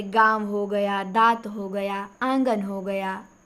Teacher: अनुनासिक का उच्चारण नाक और मुंह दोनों से होता है